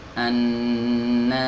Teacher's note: Ini yang disebut dengan as-safir, ya, sifat safir. Jadi tajam, ya, desisnya tajam. Ya, annas. Nah, jadi mengalir nafasnya, mengalir suaranya dan tajam begitu ya.